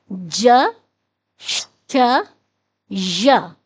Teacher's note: حروف شجریہ وہ حروف ہیں کہ جو پچھلی داڑوں کو، جبڑے کی ہماری جو پچھلی داڑیں ہیں ان داڑوں کو آپس میں ملانے سے ادا ہوتے ہیں، اور یہ سختی سے ادا ہوتے ہیں، جیسے ج، جیم، جیم کی آواز ہے ج، جیم، دیکھیں ہمارے پچھلی داڑیں جو ہیں وہ آپس میں جڑ رہی ہیں، جیم، اور ان کا مخرج ہے ج، ج، ج۔